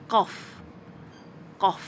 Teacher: Pangkal lidah yang berhampiran dengan kerongkong menyentuh bahagian anak tekak. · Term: huruf qaf